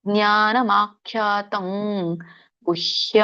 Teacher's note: ಮುಂದಿನ ಒಂದು ಗವರ್ಗ ಇರೋದರಿಂದ ಗ ಬರುತ್ತೆ